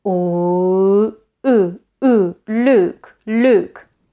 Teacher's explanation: Now, the U vowel in Luke is not as back. It's actually a bit more front than that. So the way that I normally practice this with my students is by going from a back position as in U and then going towards a front position as in I, as in C.